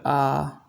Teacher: इन स्वरों के उच्चारण में ह्रस्व स्वरों से 2 गुना समय लगता है, डबल समय लगेगा।